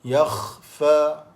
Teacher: pangkal lidah pun naik kerana dia huruf isti'la, huruf yang tebal. Yakhfa, fa 2 harakah ma asli. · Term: huruf kha